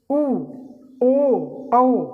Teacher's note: बोल के देखिए जीभ थोड़ा थोड़ा पीछे खिसक रही है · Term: पश्च स्वर